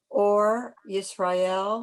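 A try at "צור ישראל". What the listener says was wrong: The difference between an ayin and a tzadi.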